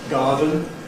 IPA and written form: ˈgɑːdən (garden)